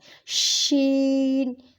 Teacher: شین کو ہم کھینچ کے پڑھتے ہیں اور شور کی آواز آتی ہے